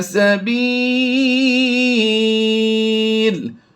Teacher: وقف جائز کی علامت ہے جیم، تو ہم نے دو پیش کو وقف میں جزم سے کنورٹ کر کے پیچھے ملایا تو وہ حروف مدہ کی وجہ سے سکون عارضی آیا، تو ہم نے مد عارض کر کے لمبا کر دیا